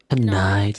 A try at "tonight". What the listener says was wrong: Tonight. Tonight. Tonight. Tonight.